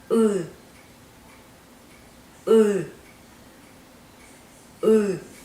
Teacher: U lies somewhere between E in the word hill and U in boom. You pronounce it as an English E, but the tongue would go back as if you are pronouncing U. If you practice going back and forth between these 2 sounds, you should be able to pronounce the U sound.